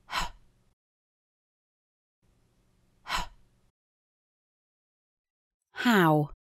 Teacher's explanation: делаем просто легкий короткий выдох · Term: гортанный глухой согласный